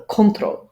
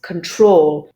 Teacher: the stress is actually on the second syllable, so in this case on the troll.